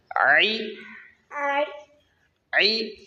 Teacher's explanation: हलक के दरमियानी हिस्से से आई निकलता है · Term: आइन